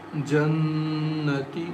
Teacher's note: Noon has shadda on it, so we recite with gunna